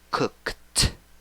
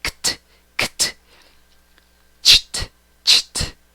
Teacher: Pero cuando pronuncias este verbo en el pasado, en la escritura lleva ed, está marcada de amarillo, esa parte de la palabra, pero la pronunciación de la E y la D es T